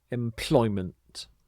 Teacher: you put the stress on this middle syllable, ploy, employment.